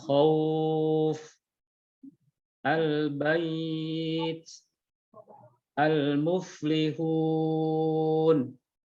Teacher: Mad arid di sini adalah mad arid lid sukun. yaitu apa-apa yang datang padanya setelah huruf mat atau lin sukun karena wakof. Kadarnya adalah 2, 4, atau 6 harokat.